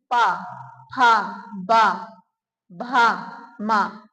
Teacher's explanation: जी दोनों होठों का इस्तेमाल हुआ और किसी चीज का नहीं हुआ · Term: ओष